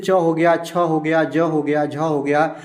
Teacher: च का जितना होते हैं वर्ण, जैसे च हो गया, छ हो गया, ज हो गया, झ हो गया, इसका उच्चारण स्थान आपका तालु से होता है